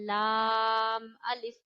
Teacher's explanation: लाम अदा होता है आपके ऊपर वाले दांतों के मसूड़ों से